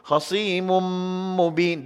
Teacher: Dengung dia, kadar dia 2 harakat. Jangan lebih pada 2. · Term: Idgham